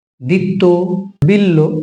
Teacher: আমরা বটা উচ্চারণ করছি না বটা হারিয়ে যাচ্ছে আর ডবল হয়ে যাচ্ছে তখনই সেটা কিন্তু অন্তস্থ তাহলে একটি শব্দের মধ্যে যদি যুক্ত ব্যঞ্জন